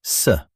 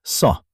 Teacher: the letter s is light. It sounds like a normal s. But s is heavy. It has a deeper, fuller sound. If you say them the same way, native speakers will hear the difference immediately.